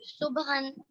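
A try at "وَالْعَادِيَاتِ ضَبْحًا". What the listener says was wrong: صبح نہیں ضاد ہے اور اس کے اوپر زبر ہے، زبر ضاد با زبر زب ضبحا، والعادیات ضبحا۔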